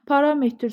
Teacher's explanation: Parametr sözündə də vurğu 2-dədir.